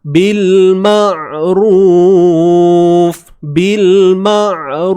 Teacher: Suara jangan bagi putus. Bila kita nak sebut huruf ain yang mati ni tuan-puan, suara jangan putuskan. Ma. Layankan lebih sikit.